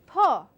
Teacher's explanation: when I say p i Am releasing the puff of air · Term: P sound